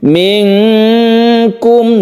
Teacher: nun mati bertemu Kaf kita sebut dengan Ikhfa Haqiqi membacanya samar dan didengungkan